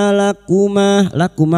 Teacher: nasyaitana syai fathah bertemu ya sukun kita lunakkan syaitana th alif kecil di atas dua harakat mad thbii th lakuma lakuma fathah diguti alif dua harakat kita panjangkan mad thbi'i